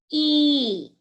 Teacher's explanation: if we take e the lips will be spreaded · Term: spreading